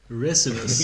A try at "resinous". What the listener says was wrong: You're adding an extra syllable on there.